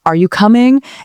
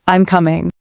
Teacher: we use rising intonation for yes/no questions, like, are you coming? And falling intonation for statements, like, I'm coming.